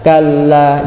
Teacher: lanya itu dipanjangkan dan dia juga huruf yang bertasdid, maka ditekan. Kalla, jangan datar baca seperti ini.